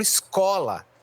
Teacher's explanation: a sílaba tônica está na penúltima posição da palavra